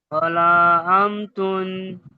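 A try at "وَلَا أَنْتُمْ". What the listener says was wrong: আনতুম শেষে মিম হবে, মিম। বাংলাতে আপনি মো বলেন।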